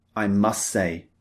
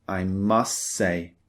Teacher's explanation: the T is very often deleted in spoken English. · We don't usually, in spoken English, pronounce the T at the end of must. We don't often say, I must say.